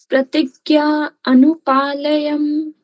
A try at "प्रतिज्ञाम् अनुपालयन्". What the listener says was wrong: Pratignyam Anupalayan. There is this m and then ma.